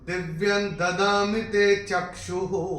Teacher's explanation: और ये चरण की समाप्ति पे जो विसर्ग आ रहा है उसका उच्चारण केवल और केवल ह होगा। चूंकि ऊ की मात्रा के साथ आ रहा है तो हु होगा